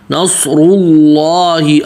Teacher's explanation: نون واضح اور سواد موٹا، بالکل موٹا سواد، نصر اللہ، آگے را بھی موٹا، اس لیے کہ را کے اوپر کیا ہے، پیش ہے۔